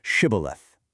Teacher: To identify them, they made them say the word shibth. Their enemies, the Ephramites, couldn't make the shh sound and would say cibilith instead.